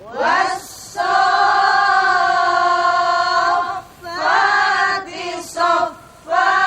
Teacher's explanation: Sofir wusto ini ditempati oleh huruf sod. Ya, huruf sod itu memiliki sifat sofir. Tapi sofirnya lebih ringan dibanding sofirnya za. Ya. Dan so ini lebih berat sofirnya dibanding dengan sin.